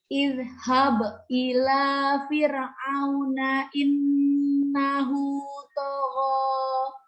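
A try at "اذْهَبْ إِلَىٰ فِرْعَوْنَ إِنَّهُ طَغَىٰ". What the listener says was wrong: Firnya ditipiskan, kalau sukun sebelumnya kasroh tipiskan lagi, turunkan bibir bawah sama rahangnya. Fir.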